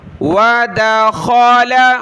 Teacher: وَدَخَلَ مَعَهُ السِّجْنَ فَتَيَانِ۔ وَدَخَلَ، خا کلرفل ہے، گلے سے نکالیں گے، موٹا کر کے پڑھنا ہے